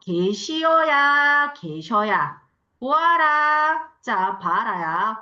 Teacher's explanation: 단모음하는 모음으로 끝나는 어간 뒤에 아, 어로 시작하는 어미가 올 때 어간의 단모음이 반모음으로 바뀌는 현상. 그래서 단모음 이가 반모음 이로 바뀌거나 단모음 오, 우가 반모음 우로 바뀌는 경우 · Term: 반모음화